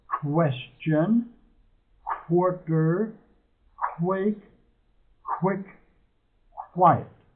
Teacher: it is a k W sound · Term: qw sound